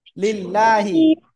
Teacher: আল্লাহ শব্দের লামের ডাইনে জের চিকুন করে পড়বো